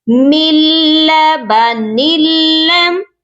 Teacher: اس قاعدے کو کہتے ہیں ادغام بلا غنہ، یعنی کہ ہم ملائیں گے لیکن بغیر غنہ کے ملا کر پڑھیں گے